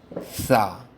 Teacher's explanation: নরম আওয়াজে জিহ্বার আগা উপরের দাঁতের আগার সাথে লাগিয়ে উচ্চারণ হবে